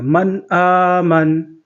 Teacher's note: یہاں پہ اظہار ہوگا، جلدی پڑھیں گے، یہاں پہ غنہ نہیں کریں گے۔ وقف بھی کریں گے تو یہ نون ساکن ہو جائے گا، من آمن۔